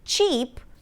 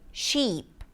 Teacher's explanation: So for example, instead of saying 'cheep', Arabic speakers might replace the /ch/ sound with /sh/ and say 'sheep'. · Arabic speakers might replace the ch sound with sh and say sheep. Here's the thing, the ch sound is not a distinct sound in Arabic.